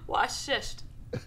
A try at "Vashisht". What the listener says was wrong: Vashisht? What did you just say? Vashisht. Vashisht.